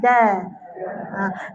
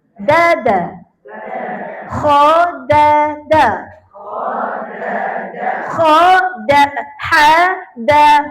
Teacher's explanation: Bukan da. Ujung lidah sentuh belakang yang tempat pengikat gigi dekat gigi kapak tu. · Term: Huruf dal